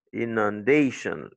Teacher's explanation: L'accent, c'est sur day.